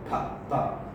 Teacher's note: you can have a plosive sound, which is bilabial